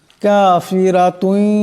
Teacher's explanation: কাফিরাতুন এখানে রার উপর জবর আছে, রাকে মোটা আওয়াজে পড়তে হবে